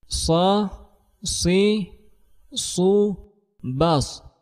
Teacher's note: suara tambahan yang keluar dengan kuat di antara ujung lidah dan gigi seri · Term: safir